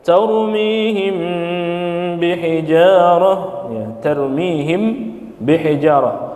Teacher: Lalu ikhfa syafawi samar bi gunnah